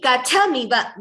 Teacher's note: Just the tha is Mahaprana and ka is Alpaprana. Just that slight difference.